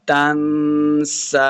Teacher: نون ساکن کے بعد آگے سین حروف اخفاء سے ہے، تو یہاں پہ اخفاء کا قاعدہ ہے، تو یہاں پہ ہم نے غنہ کر کے پڑھنا ہے. تنسى اب آگے سین کے اوپر کھڑی زبر ہے اور مد بھی ہے، تو یہاں پہ ہم نے اس کو لمبا کر کے پڑھنا ہے.